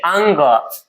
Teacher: इसके उच्चारण में थोड़ी सी आवाज नाक से आनी चाहिए